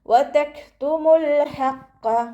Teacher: മീമിൻ്റെ കൂടെയുള്ള വാവ് മദ്ദിനെ നമ്മൾ കൂട്ടി ഒതുമ്പോൾ കട്ട് ചെയ്തിട്ട് ഉച്ചരിക്കുക. മദ്ദിന് ശേഷം ഹംസത്തുൽ വസ്ൽ വന്നു, അപ്പോൾ മദ്ദിനെ കട്ട് ചെയ്യുക കേട്ടോ.